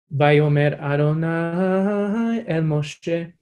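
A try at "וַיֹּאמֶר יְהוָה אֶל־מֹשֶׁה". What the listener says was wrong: El, stay up there. El Moshe. Normally, small details of melody, I'm like, as long as the contour's right, I'm not hugely fast. But the reason it's important to stay up here in this moment is because that's where the tension is. You know, that's where the sort of fun of this mark is.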